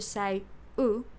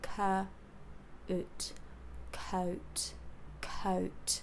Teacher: you let the tongue Bunch up in the center to say o and you bring the lips together close the jaw